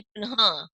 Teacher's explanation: विसर्ग लगा हुआ है, तो ह की ध्वनि आएगी